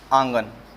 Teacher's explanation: अनुनासिक स्वर का उच्चारण नाक और मुंह के द्वारा किया जाता है।